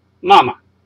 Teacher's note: 后面呢一个呢就是一个叫做轻音，即係放轻把声就咁推出嚟嘅啫